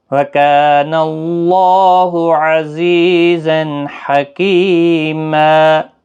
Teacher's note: زا سختی کے ساتھ پڑھا جائے گا، حروف صفیریہ کا حرف ہے۔ اور وقف کی صورت میں یہاں پر بھی وقف بالابدال ہوگا، تنوین کو ختم کر کے ایک زبر کے ساتھ وقف کریں گے، ما بنے گا، ایک الف کی مقدار کے برابر کھینچ کر وقف کریں گے۔